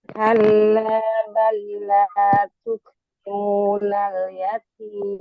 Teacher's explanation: tukri ri-nya dibaca tarkik yaitu tipis karena berharokat kasroh